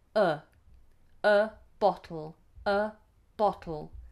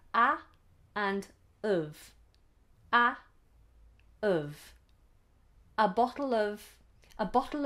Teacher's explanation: we don't say a or ah we normally say uh